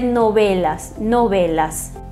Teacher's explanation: E o V, na maioria dos países, tem um som mais puxado para um B. É um intermediário entre V e B, os lábios semi-abertos, né, não muito pressionados, e vai se dizer novelas, novelas.